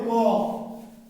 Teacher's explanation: ক এর নাম হলো অঘোষ অল্প প্রাণ